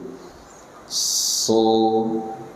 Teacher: Pangkal lidah naikkan so, kemudian terjadi pengepungan suara antara lidah dengan langit-langit, namanya itbaq, ya, diucapkan dengan tebal.